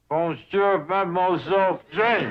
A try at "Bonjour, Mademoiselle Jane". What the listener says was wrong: That's very good, except for the mwah sound. It must be soft. Mwah. Watch my lips closely. Mwah.